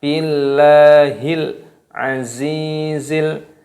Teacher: za-nya dipanjangkan karena ada ya sukun dibaca matobi'i dipanjangkan 2 ketukan